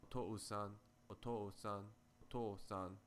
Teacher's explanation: Similarly, if you pronounce the word for father, otou-san, quickly, otou-san, otou-san, otou-san, it sounds like one long vowel sound